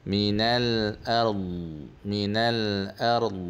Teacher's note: d tu dia bersifat al-istitalah. Dia memanjangkan sebutan d tu.